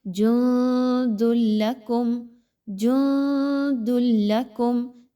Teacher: نون ساکن کے بعد دال ہے تو یہاں پر اخفا کیجئے، نون کی آواز کو مخفی کیجئے۔